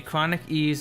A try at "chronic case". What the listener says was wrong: Ease. Case. Chronic ease. You said chronic ease. No, you said chronic ease.